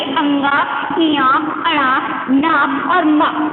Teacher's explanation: दंतों में पांचवा जो हमारी ये पांचवी जो पंक्ति होती है ये वाली लास्ट वाली, यानी कि अंगा, इया, अड़ा, नाप और मा, ये सारे जो होते हैं इनका उच्चारण कहाँ से होता है, नाक से। यानी कि ये मूर्धा को छूते हुए नाक से इनका उच्चारण किया जाता है।